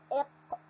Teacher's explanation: نعطي مثال، لاحظ أنا ما حكيت قاف، قلت إق، إضافة همزة قبل الحرف. أين انقطع الصوت؟ عند أقصى اللسان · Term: مخرج الحرف